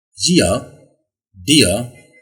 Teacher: That's an ear sound. Okay, this sound starts with E sound and glides to schwa sound